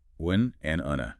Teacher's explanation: Wen is short, un is longer with a slight falling tone for no.